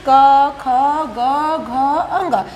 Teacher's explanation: जो वायु है व वे सीधा गले से ही अर्थात कंठ से ही निकलती है · तो देखेंगे क ख ग घ अंग, इनका जब हम उच्चारण स्थान करती हैं तो जो वायु है वे सीधा गले से ही अर्थात कंठ से ही निकलती है, इसीलिए इसे कंठ या वर्ण, चूँकि इनका उच्चारण करते हैं तो आवाज़ गले से ही निकलती है, इसीलिए इसे कंठ वर्ण कहा जाता है।